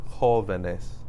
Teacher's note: Where am I putting the stress? I'm putting it on the O